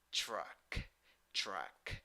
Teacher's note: You have U when you write it, but when you pronounce it, you have schwa. Pronunciation: truck, truck.